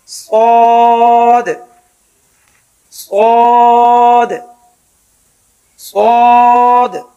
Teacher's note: صاد کا مخرج زبان کی نوک جب نیچے والے سامنے کے دانتوں کی جڑ میں لگے، تھوڑا سا منہ کھول کر یعنی موٹا کر کے ہلکی سی سیٹی کی آواز کے ساتھ صاد صاد صاد۔